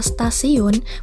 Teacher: Misalnya, bunyi T adalah bunyi apiko-alveolar atau apikodental, tetapi pada kata stasiun, bunyi T dilafalkan sebagai bunyi T lamino-alveolar. Perubahan bunyi hambat apiko-alveolar T menjadi bunyi hambat lamino-alveolar adalah karena pengaruh secara progresif dari bunyi geseran lamino-palatal S.